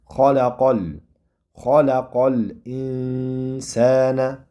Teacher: Hop, endi qofni fathasini sukunlik mana bu lamga uriladi. O'rtadagi harf alif o'qilmasdan tashlab ketiladi.